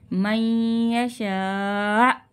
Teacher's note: حمزہ ساکنہ کو جھٹکا دے کے پڑھیں گے